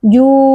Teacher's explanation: Ju, mad tabi'i. Terdapat huruf waw sukun yang didahului oleh huruf dammah, dibaca panjang selama dua harakat